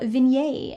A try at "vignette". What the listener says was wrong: It's vignette, it's not vignette. You don't say the T. It's French!